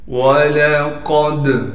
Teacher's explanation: وَلَقَدْ قاف کو دال سے ملائیں گے، قاف کو موٹا کر کے پڑھنا ہے۔ دال حروف قلقلہ میں سے ہے، لہٰذا دال یہاں پر ساکن ہے، یہاں پر قلقلہ یعنی آواز کو ہلائیں گے